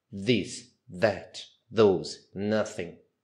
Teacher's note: presa ela fica presa em cima da boca né o o o th ele vai vir no meio dos dentes